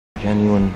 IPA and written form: ˈjenyo͞oən (genuine)